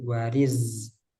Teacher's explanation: Terus itu zai. Wariz, jangan jadi sin.